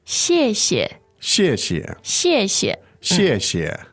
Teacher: fourth tone into a neutral tone